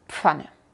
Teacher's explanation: Cierras los labios como para decir una P y después sales con la F.